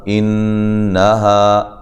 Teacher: انہا نون مشدد پہ غنہ ضروری ہے، ہا الف مدہ ہے۔